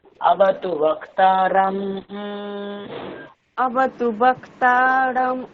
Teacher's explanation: আপনি মকে অনুস্বার উচ্চারণ করছেন, অনুস্বার উচ্চারণ করলে হবে না, মকে ম উচ্চারণ করতে হবে।